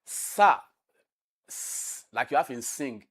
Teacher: is a voiceless alveolar fricative